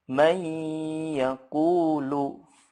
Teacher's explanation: harus dibaca panjang atau ditahan dengungnya itu sepanjang atau seukuran 2-3 harokat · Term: ghunnah Akmal